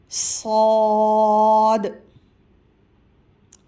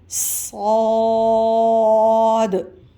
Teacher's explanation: صاد، سیٹی سختی سے ادا ہوگا۔